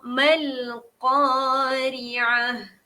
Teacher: ta ni ubahkan dia menjadi huruf ha.